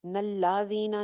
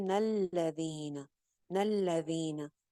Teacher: मुमिनून लजीन, नून को आगे लाम के साथ ज्वाइन करें, लाम के ऊपर शद है, यानी कि दो लाम है, नून जबर लाम नल, लाम जबर ला। लाम जबरें जो है ना वो लंबी नहीं करनी है